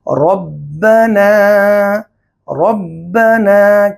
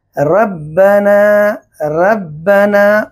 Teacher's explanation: جیسے را کو موٹا یا باریک پڑھنے میں غلطی کرنا، یعنی یہاں پر را ہے، را کے پر زبر ہے، اس را کو موٹا پڑھنا، جیسے ربنا، ربنا، کسی نے پڑھا ربنا، ربنا، یہاں را کو باریک کر دیا۔